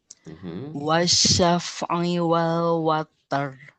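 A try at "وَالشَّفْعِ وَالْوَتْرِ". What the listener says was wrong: Watr. jadi bukan water ya. Jadi what. Jadi kalau tidak ada roknya, jadinya cuman what. jadi cuman angin aja. Sehingga kalau ditambah r di depannya itu tambah aja dengan pantulan namanya.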